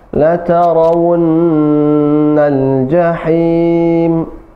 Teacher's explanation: U-nya ditahan 2 harakat dan didengungkan.